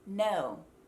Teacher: difference between an american o and an australian o is that in a u.s american o no the tongue actually pulls back into the mouth